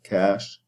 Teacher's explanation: is a low front and then lax, unrounded